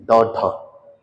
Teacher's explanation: इनमें जीभ पहले आपकी ऊपर जाके मूर्धा से टकराएगी और फिर आगे गिरेगी झटके से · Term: उक्षित व्यंजन